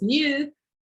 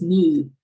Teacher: when you have an alveolar consonant, a consonant that you touch the tip of your tongue behind your teeth, like t, d, n, you don't have this u